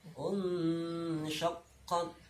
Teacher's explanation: Dia lafaz insyaqqat, nah, itu taknya terakhir diwakafkan, tidak c tapi harus tahan dulu, syiddah dulu, kemudian ada hamznya